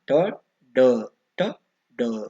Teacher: ನಾಲಿಗೆಯು ಬಾಯಿನ ಮೇಲ್ಭಾಗವನ್ನ ಮುಟ್ಟುವುದರಿಂದ ಹುಟ್ಟುವ ಪದಗಳಾಗಿರುತ್ತವೆ ಅಥವಾ ವರ್ಣಗಳಾಗಿರುತ್ತವೆ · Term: ಮೂರ್ಧನ್ಯ ಧ್ವನಿ, ಮೂರ್ಧನ್ಯ ಧ್ವನಿಗಳು